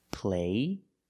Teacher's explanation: Play, there's no stop t, the vowel is longer.